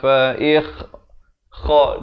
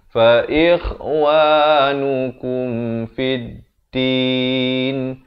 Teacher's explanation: kha di hujung kerongkong ini.